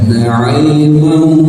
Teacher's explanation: tahan 2 harokat, tapi suaranya harus dikehidungkan, didengungkan ya. Jangan sampai tidak dimasukkan ke hidung. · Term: idgham biguna